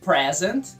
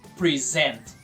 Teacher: o substantivo presente, present, tem a sílaba tônica na primeira sílaba, present. Já o verbo apresentar, a sílaba tônica é a segunda, present. Present.